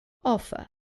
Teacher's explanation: Remember that in British English, the R at the end is not pronounced.